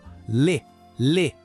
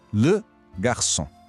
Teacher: É um som bem mais fechado, mais rápido.